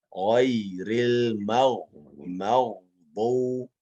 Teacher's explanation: ghain kembalikan makhrajnya pada tenggorokan